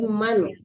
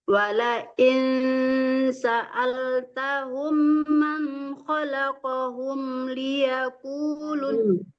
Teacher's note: Jangan mang, tapi man. Harus jelas mati nunnya. Man itu namanya izhar ya, harus jelas. Wala in, nah, kalau itu baru samar ya, itu ikhfa hakiki.